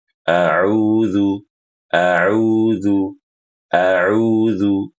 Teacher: Baik, ibu-ibu saat membaca a'udzu itu harus dibedakan antara a dengan u, a dengan hamzah, u dengan ain. Kemudian pastikan bibir kita itu monyong, ya. Kenapa monyong? Karena huruf ain berharokat dhammah dan dipanjangkan 2 harokat. A'udzu, a'udzu, a'udzu, begitu.